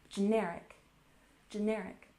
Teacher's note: We emphasize the second syllable